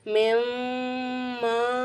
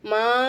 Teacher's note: மீமுக்கு மேல பெரிய மத்தி இருக்கறனால அஞ்சு அலிபுக்கு நீட்டிட்டு